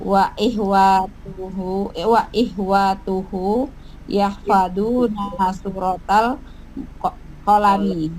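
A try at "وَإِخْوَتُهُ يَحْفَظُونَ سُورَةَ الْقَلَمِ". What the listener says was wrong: Bukan wa ihwa tapi wa ikhwa pakai kha.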